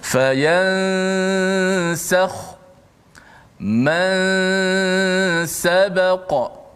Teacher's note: Contoh, fayansakhu, masa sebut ya saja, habis ya saja, lidah kita dah pergi kepada makhraj huruf selepas nun tu, huruf sin lah. Okey, dan nun tu dikekalkan pada gunnah khayshum saja